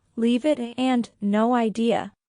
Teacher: Sometimes one word flows into another. For example, leave it and no idea. Both sound like they have no spaces between the words.